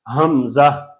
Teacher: زا میں سیٹی ہوتی ہے، ہا پھر جو ہے گلے سے نکلتا ہے